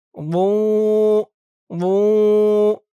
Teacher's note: মুখটা গোল এবং ভরপুর হয়ে যাবে